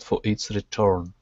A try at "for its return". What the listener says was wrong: So focusing on the R on return instead of for its return, rolling the R.